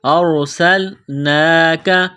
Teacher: سین کو باریک کرنا ہے سین میں سیٹی کی آواز پیدا کرنی ہے ارسلناک کھڑا زبر ہے ایک الف کے لمٹ میں کھینچنا ہے